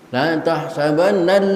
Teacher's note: tasydid yang ada di atas huruf lam tidak berlaku hukum gunnah musyaddadah, jangan ditahan menjadi la tahsabannal, tidak perlu ditahan, cukup selewat saja, sekilas saja, kecuali tasydid nun dan tasydid mim.